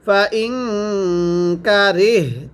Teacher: ফা জবর ফা, হামজা নুন জের ইং, নুন সাকিনের পরে কাপ এক ফারাব গুন্নাহ করে পড়তে হবে।